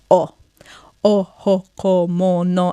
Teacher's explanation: It's a slightly rounded O. It's almost like you've written the letter O on a page, you've cut it out, and you're wanting to fit your lips around the shape, yeah? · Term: O sound